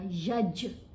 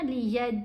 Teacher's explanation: یہاں پر جیم کے اوپر ہم نے کلکلا کرنا ہے، جیم کی آواز کو ہلا کر پڑھا جائے گا